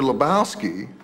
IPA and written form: ləˈbaʊski (Lebowski)